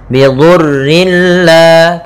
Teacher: kita masukkan tanwinnya ke lam tanpa ditahan ya, bila tanpa dengan gunnah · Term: idgham bila gunnah